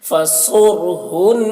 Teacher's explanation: سے پہلے پیش ہے تو را کو بھی پر پڑھنا ہے، صاد کو بھی پر پڑھنا ہے کیونکہ صاد حروف مستعلیہ میں سے ہے ۔ فصرہن، دیکھیے نون مشدد ہے، نون میں غنہ کریں گے،